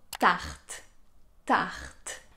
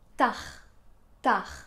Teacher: Le R que vous entendez dans tarte, il est un peu plus léger, peut-être, que le R que vous avez l'habitude d'entendre.